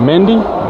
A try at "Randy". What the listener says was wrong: Randy. Randy with an R.